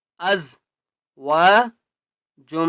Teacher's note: فِيهَا از و جم، میم کے اوپر تشدید ہے، جیم کو میم کے ساتھ ملائیں گے اور غنہ کریں گے